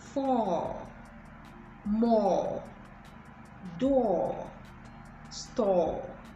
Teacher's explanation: So it's the elongation of the short o sound.